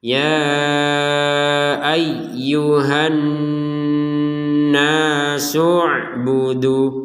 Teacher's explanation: Jadi su nyambungnya langsung ke ain, hamzahnya tidak dipedulikan. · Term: hamzatul wasl